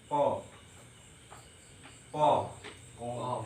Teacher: pangkal lidah dekat anak lidah dengan langit-langit yang lurus di atasnya, yaitu tempat keluarnya po.